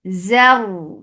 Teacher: Ra will be heavy because there is fatha before it.